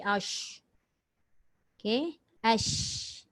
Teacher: Tengah lidah naik ke langit tu rapat ke tidak? Tak rapat. Sebab dia nak bagi ruang udara tu keluar. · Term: shin